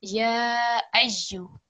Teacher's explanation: A lot more emphasis on the ya because of the shadda.